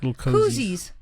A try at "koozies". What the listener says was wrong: Koozies, not cozies. Koozies.